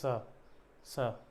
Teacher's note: दंत स तो जीभ को टच करने से बचना है दांत का प्रयोग करके